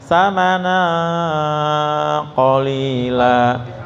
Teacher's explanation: ketika jatuh ke ko atau kaf itu nyaris kayak eng.